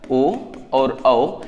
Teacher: ओ और औ, इनका उच्चारण क्या हो जाएगा, कंठ प्लस ओष्ठ से हो जाएगा। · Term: ओदौतो कंठोष्ठम